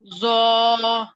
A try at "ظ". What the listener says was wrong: ظا پھر زیادہ ہو گیا.